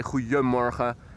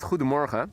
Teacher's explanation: It does have a D in the official writing, goedemorgen. Most people say goedemorgen, and instead of pronouncing a D, you pronounce an I, which with all the other letters sounds like goedemorgen.